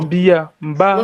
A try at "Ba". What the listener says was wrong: Tu es en train de dire Mba comme s'il y a un M devant. Donc, ce n'est pas c'est pas Mba, c'est Ba.